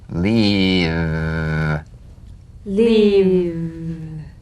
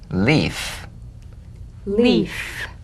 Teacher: have cognates that is they have a voiced or unvoiced counterpart those in the left column are voiced made with vocal cord vibration those in the right column are unvoiced made without vocal cord vibration